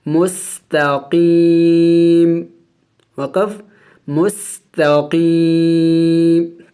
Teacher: وقف کریں گے تو وقف میں اس میم کو سائلنٹ کر دیں گے، یعنی ساکن کر دیں گے